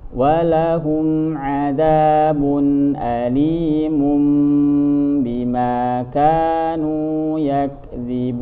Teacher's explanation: Iqlab itu juga ada gunnahnya ketika tanwin atau nun mati ketemu dengan huruf ba, karena huruf iqlab cuma satu yaitu huruf ba, maka dibacanya dirubah jadi suara mim, situ tanwin atau nun sukunnya, kemudian disertai dengan gunnah